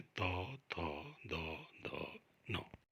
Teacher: उसके पश्चात आते हैं दंत, दंत्य या दांतों से। जिन वर्णों का उच्चारण करते समय हमारी जिह्वा दांतों से टकराती है ऐसे वर्णों को दंत्य वर्ण कहा जाता है। इनमें स्पर्श व्यंजन के त्वर्ग वाले सभी वर्ण आते हैं, तो, थो, दो, दो, नो।